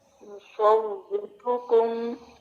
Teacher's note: را پیش کے ساتھ ہے تو یہاں پہ تکرار اور اس کی تفخیم کو تھوڑا انڈر لائن کر لیں